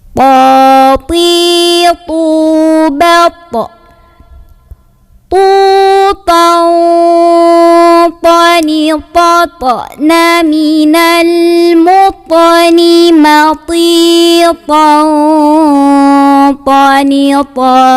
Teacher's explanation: Huruf ta makhrajnya keluar dari ujung lidah, ditempel di pangkal gigi seri atas. Jadi di tempat tumbuh gigi yang tengah yang atas.